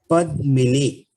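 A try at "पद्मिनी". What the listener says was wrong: Padmini. Ni is dirgha.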